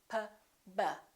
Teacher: P and B have the same point of articulation because both of them require the lips to close